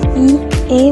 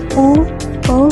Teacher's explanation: Bunyi I, E menggerakkan lidah bagian depan